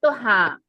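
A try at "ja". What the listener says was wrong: হাটা এখানে হা উচ্চারণ হয় না, এইস এর মতো উচ্চারণ হবে, ইয়া, ইয়া। হ্যাঁ, এই আর এর জন্য ইয়া হয়ে গেছে। আবার দেখেন এখানে যেটা বললেন, এই যে হাবেন, এই দেখেন এইস, হা, ওহো, হাবেন, হাবেন, হাবেন, হাবেন মানে আছে। এই যে দেখেন, এইচটা এখানে হা উচ্চারণ আছে, হাবেন। আবার এখানে ইয়া, ইয়া, এইচটা কি এইচ এর মতো উচ্চারণ আছে, তাই না? তো এটা এরকম এক্সেপশন, একটু মনে রাখেন। তাহলে ইয়া হবে ইহা, ইহা, ইহা।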